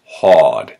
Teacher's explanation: I call the free fall, and that is an A-R sound, which doesn't become an or, it just becomes an aw. So hard becomes hawed.